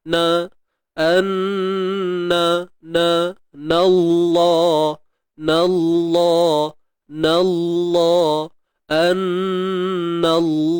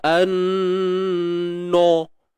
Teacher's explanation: Wa'lamu an, dengung wajibul gunnah, wajib dengung kadar 2 harakat. Anna na nipis, na masuk kalimah Allah ni, lam ni baru tebal.